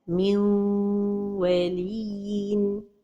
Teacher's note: So the right pronunciation is to give time to the غنة.